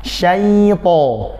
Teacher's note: Jadi tahan dulu, syai, baru lepaskan ke to-nya tanpa antum memutus suara ya.